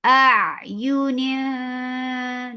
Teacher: You're going towards the makhraj of jim. You're hiding the sound of noon and you're keeping the sound in your nose of noon. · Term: ikhfa